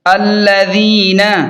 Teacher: لام زبر ل، ذال یا زیر ذی، نون زبر ن، الذین، ذال کو نرم پڑھیں اور تھوڑا کھینچ کر پڑھیں یا مدہ کی وجہ سے